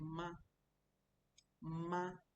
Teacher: For example, if I say ma, ma, there's no tone up or down. My voice is just flat. Ma, horizontal, ma.